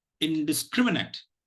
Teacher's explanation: the third syllable scrim takes the primary accent